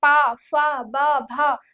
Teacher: च झ यह हो जाता है हमारा तालु से तालु से हो जाता है ओष्ठ वाला कौन सा हो जाएगा ओष्ठ वाला होता है प फ प होता है प फ ब भ और म ये हमारे ओष्ठ वर्ण है जो हम ओठ से बात करेंगे तो जब हम बोलेंगे प फ ब भ तो ओठ से ही बोलेंगे